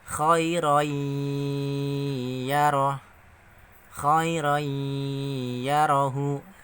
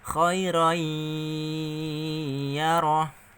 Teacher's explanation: maka bacanya masuk dengan mendengung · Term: Idgham Bighunnah